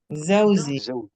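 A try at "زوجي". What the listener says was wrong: Bukan zauzi tapi zauji.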